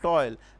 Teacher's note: It is giving the sound of oil, which has 2 syllables. It looks like 2 syllables, but it has no 2 syllables, it has only one, which gives the sound of diphthong